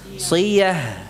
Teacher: Kemudian juga itu akhirannya tak marbutah. Apabila diwaqafkan, yang kita ucapkan hak sukun. Jangan sampai hilang suara haknya.